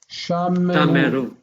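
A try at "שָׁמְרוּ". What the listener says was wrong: We tend not to pronounce the vocal shva there, and it's just Shamru. Shamru. But Shameru or Shamru is fine.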